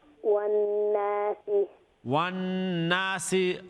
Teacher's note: There's a ghunna on the noon because it has a shadda and it's akmal ghunna.